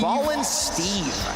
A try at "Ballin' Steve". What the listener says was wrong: But you have to say it with a lot of emphasis. You have to go Steve. Yeah, you can't just can't say Steve without the emphasis.